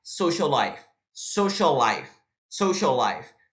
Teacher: Two consonants. A gente vai juntar isso, a gente só vai usar um L só.